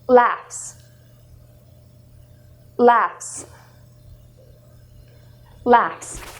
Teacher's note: If you feel your throat, laughs, the ending, it doesn't vibrate, meaning it comes from the mouth